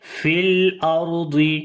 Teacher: لام کے اوپر صفت توسط، آواز کو درمیانہ کنٹینیو کیا، آدھی آواز کو کنٹینیو کیا، مکمل آواز کنٹینیو نہیں کی، اور نہ ہی ایک دم آواز کو بند بھی نہیں کیا، جیسے فی الارض، یہ غلط ہے۔